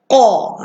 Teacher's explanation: Yang pertama, huruf qaf berbaris di atas. Okay, huruf qaf berbaris di atas, pangkal lidah tolak anak tekak ke dalam. Qa. Dia bunyi ke dalam, bukan bunyi keluar.